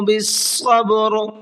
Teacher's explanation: را کے اوپر وقف کیا ہے اور را کو ساکن کر دیا ہے